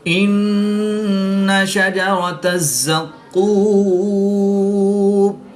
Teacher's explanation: ان شجرۃ الزقوم، نون مشدد میں ہمیشہ غنہ ہوتا ہے تو یہاں پر ہم غنہ آنی کر کے پڑھیں گے۔ را پر زبر ہے تو را کو پر یعنی موٹا پڑھیں گے